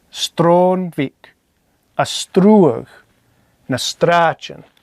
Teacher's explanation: SR in the dialects I'm familiar with and how I was taught has a T sound.